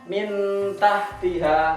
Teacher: maksudnya samar-samar itu ketika masuk ke suara nun mati itu seakan-akan mau langsung persiapan masuk ke huruf ta. Nah, itu samar-samar. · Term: ikhfa